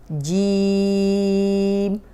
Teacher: جی میں ناک میں آواز نہیں جائے گی، جی کو لمبا کریں گے